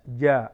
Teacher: ജീമിന് എന്ത് ചെയ്യരുത്? കനപ്പിച്ച് പറയേണ്ട അക്ഷരമല്ലോ, ജോ എന്ന് പറയേണ്ട അക്ഷരമല്ല, പരത്തി ജ എന്ന് തന്നെ പറയേണ്ടത്.